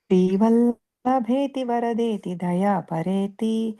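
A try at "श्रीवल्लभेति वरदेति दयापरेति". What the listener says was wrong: Slow. You are running in super fast express. train. Śrī-Vallabheti Vara-deti Dayā-pareti bhakta-priyeti bhava-lun hana-kovideti. Srī-Vallabheti Vara-deti Dayā-pareti bhakta-priyeti bhava-lun hana-kovideti.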